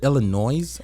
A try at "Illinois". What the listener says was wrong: No. The S is not pronounced. It's silent.